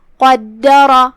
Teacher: 2 حرف کے برابر دال کو پڑھنا ہے. یہاں را کا حکم ہے تفخیم، ہم اسے بھی بھاری آواز میں پڑھیں گے. تفخیم سے، دال کو ترقیق سے، پھر را کو پھر سے تفخیم سے. · دال پہ تشدید ہے. 2 حرف کے برابر دال کو پڑھنا ہے